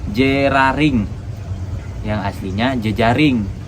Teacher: Bunyi dari kata berikutnya muncul dulu. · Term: antisipasi